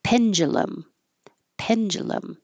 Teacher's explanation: because of this D and U next to each other, it can make a J sound